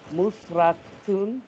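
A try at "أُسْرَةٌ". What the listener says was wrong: There is no meme here. Usratun.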